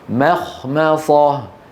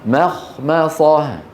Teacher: الميم الأولى مرققة، بعدها خاء مفخمة، بعدها ميم مرققة، بعدها إيه؟ صاد مفخمة